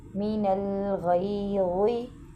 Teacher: اس میں غین کو موٹا پڑھیں گے